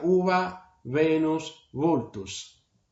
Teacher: no era una V como se hace en italiano, con los incisivos en los labios, sino era labios sobre labios